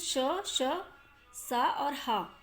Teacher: इन व्यंजनों का उच्चारण करते समय वायु मुख में टकराकर ऊष्मा उत्पन्न करती है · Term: ऊष्म व्यंजन